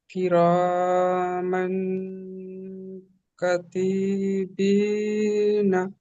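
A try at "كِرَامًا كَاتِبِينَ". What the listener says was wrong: কাতিবিনা পড়েছেন। কাকে টান দিতে হবে, কাফ আলিফ জাবার কা, আলিফ মাদ্দা আছে না, আলিফের ডান দিকে যাবার। আর তি টান দিয়েছেন। তি কিন্তু টান হবে না, তাজের তি হারাকাত।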